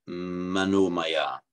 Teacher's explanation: In Sanskrit, equally, it wouldn't be the manah maya, because it's followed by a voiced consonant, it becomes manomaya. The same as Pali, but the difference is in Pali it always becomes an O, whereas in Sanskrit it becomes an O because it's followed by a voiced consonant.